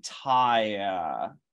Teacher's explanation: that's three vowels in a row, ah, I, and schwa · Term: triphthongs